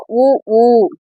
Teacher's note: நம்ம வாய வந்து இந்த இதல்களை வந்து குவிச்சுதான் சொல்லுவோம் · வாய் திறக்கும் முயற்சியுடன் இதழ்களை குவிப்பதால் பிறப்பது உ ஊ.